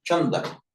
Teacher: the r drops out in Pali, so we just get chanda, meaning moon